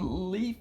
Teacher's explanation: the sound comes around the sides of your tongue